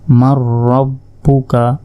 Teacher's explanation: এরপর দেখুন মিম গিয়ে সরাসরি রকে ধরবে। নুন সাকিনের পর র অক্ষরটি এসেছে, ঈদগামে বেগুন্নার অক্ষর, তাই এটি গুন্না ছাড়া পড়তে হবে। মিম র জবর মার, র বা জবর রব, বা পেশ বু, মার রব্বু, কাব জবর কা, মার রব্বু কা।